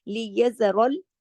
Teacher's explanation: را موٹا زبر کی وجہ سے